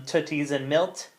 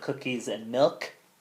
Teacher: fronting which is when we take our back sounds and produce them in the front so veers are produced as typically alvs so this is um · velars are produced as typically alveolars